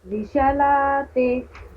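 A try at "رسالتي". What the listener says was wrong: रिसालाती। हाँ बोलना है, सा रिसालाती। रिशा नहीं, रिसा। रिसा सा। सा बोलिए, सा। शा नहीं, सा। सा सा सा हिंदी वाला रिसा।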